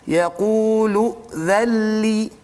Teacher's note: huruf nun itu masuk ke dalam lam secara kamil, secara sempurna, maka tidak bunyi lagi huruf nun dan tidak ada gunnah di situ. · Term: idgham bila gunnah